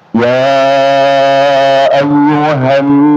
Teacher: Jadi bukan ya ayyuhannas ini nun bertasydid ada dengungannya dua harakat ya. Dan gunah itu dengungan itu keluarnya dari hidung ya.